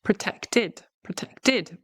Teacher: We use the id ending, we add a syllable because it ends in a T.